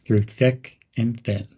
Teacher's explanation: Use a supportive, loyal tone. There's a slight pause between thick and thin.